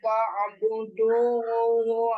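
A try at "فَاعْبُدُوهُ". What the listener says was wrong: Ketika mau dilanjutkan, maka fa'buduhu. Jangan sampai kepanjangan fa'buduhu. Nah, keasikan lagu.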